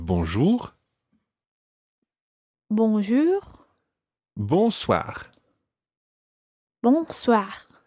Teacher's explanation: both have the same beginning as the word bull bo n and it's that nasal sound